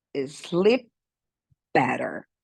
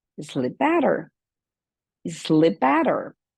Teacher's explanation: Esse P é praticamente mudo. Então, quando nós juntarmos, sleep better, sleep better. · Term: linking sound